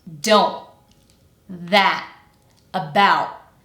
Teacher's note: hear how the T isn't just deleted, but I'm using a glottal stop at the end · It's important to note that we are not simply dropping the T entirely from the word. I'm replacing what you might expect, which is the phoneme t, with the glottal stop phoneme, which again is where I stop the air with my throat.